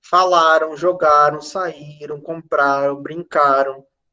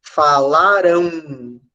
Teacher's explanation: E com a diferença, nesse caso aí do AM, que há um som de um U que não aparece como uma letra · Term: ditongos decrescentes nasais